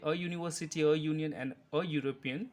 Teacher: though the words university, union and European start with vowel letters, these letters have consonant sound Y